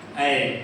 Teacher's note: ए और ई दोनों का उच्चारण स्थान कंठ तालू है कंठ और तालू दोनों मिलकर के होगा ए देखो कंठ भी